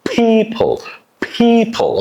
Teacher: stress E vowel sound, and P is very plosive. People. You push a lot of it outside and you say people, people, people.